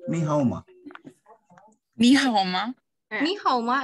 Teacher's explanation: has a falling and rising intonation